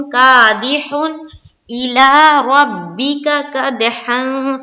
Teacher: यहाँ पर इजहार करना है, यानी कि नून की आवाज को जाहिर करके जल्द निकलना है, बिल्कुल भी देर नहीं लगानी है